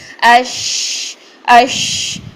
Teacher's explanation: اس میں سانس بھی جاری ہو رہی ہے, اس میں آواز بھی جاری ہو رہی ہے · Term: شین